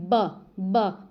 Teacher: आपके जो होंठ है ना वो आपस में मिल रहे हैं और अलग हो रहे हैं। ब ना तो इसमें ऊपर जीभ जा रही है ना दांतों की जरूरत है, तो ओष्ठ ध्वनि है, ऑप्शन नंबर बी।